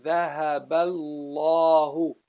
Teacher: So then you say ذهب bal, the lam after it. You jump from the ba to the lam right away. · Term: Hamzatul Wasl